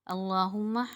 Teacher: میم مشدد پہ ایک الف کی مقدار غنہ کریں گے